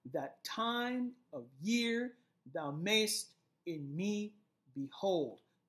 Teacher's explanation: notice we have units of unstressed followed by stressed syllables